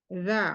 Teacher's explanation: Al-lisan yaitu ujung lidah bersentuhan dengan ujung gigi seri bagian atas. Kemudian sifat huruf za yaitu rohwa, jahar, dia tertahan udara atau napas, kemudian tapi mengalir suara, za, makanya rohwa, kemudian tidak ditebal karena istifal.